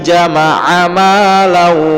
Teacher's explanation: lau dengung karena dia tanwin atau fathatain bertemu dengan huruf waw, idgham ma'a gunnah tadi.